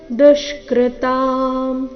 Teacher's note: ದುಷ್ಕೃತಾಂ ದು ಮೇಲೆ ಆಘಾತ